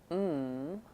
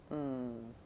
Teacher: to know that it's what's called a nasal sound that means I'm sealing off the airflow from the mouth and so the sound actually comes out of the nose